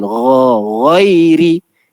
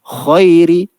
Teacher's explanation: Ghin ni dengan kha makhraj sama. Sama tempat keluar. Tapi ghin ni bawah sikit. Kha atas sikit.